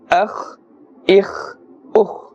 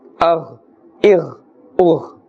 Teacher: Therefore, they must be pronounced with a thick tone, a thick sound, a full mouth. However, the kha is pronounced with a scraping sound, and the ghain must not be pronounced with a scraping sound. Do not say gain as well, because gaf is not included in the Arabic letters.